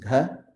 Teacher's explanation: If you use a soft aspirated, it becomes gha.